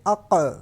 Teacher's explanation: جو اینڈ پہ ق کی آواز دوبارہ ڈبل آواز نکلے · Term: قلقلہ